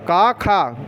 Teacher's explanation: का खा गुंजन नहीं हो रहा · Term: अघोष